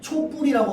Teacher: 다음 발음할 때 뒷말이 첫소리가 된소리로 일어납니다